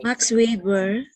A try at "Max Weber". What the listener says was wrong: Max Weber. It's actually Weber. V. It's not We. That's how you pronounce it now.